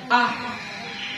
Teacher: Ada angin keluar, berarti dia hams. Huruf H jangan terlalu dari dada, ya, jangan ya, biasa aja.